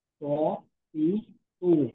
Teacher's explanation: 11 নম্বর মাখরাজ জিহ্বার আগা সামনের উপরের 2 দাঁতের গোড়ার সঙ্গে লাগাই উচ্চারিত হয়।